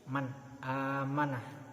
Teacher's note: Contohnya man amanah, nun mati bertemu dengan hamzah, tidak boleh dibaca dengung, tidak boleh dibaca samar, harus jelas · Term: idhar